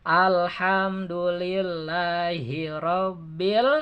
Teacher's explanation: ini termasuk huruf Qomariah jadi alif lam terdengar jelas lamnya